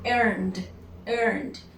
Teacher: earn ends with N is voiced, so I need to produce a D